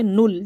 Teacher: ہم نون کو لام سے ملا کر ایک دفعہ پڑھیں گے نل، جلدی، اور ہونٹوں کو بالکل گول رکھنا ہے، و تکون